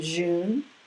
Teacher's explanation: It's not quite a Z like in zoo, but it still buzzes just a little bit. It's made by putting your tongue up near your teeth and it tickles a little bit. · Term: zh